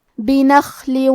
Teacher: حرف الخاء کے ادائیگی حلق کے اوپر والے حصے سے ہے، خا حروف تفخیم میں سے ہے تو ہم یہ حرف کو موٹی آواز میں پڑھیں گے · آخری میں لام کے نیچے تنوین زیر ہے، پھر حرف الواو ہے کلمت وجعلنا. یہاں حکم ہے ادغام بغنہ تو ہم یہ حکم کو غنہ اور تشدید کے ساتھ ادا کریں گے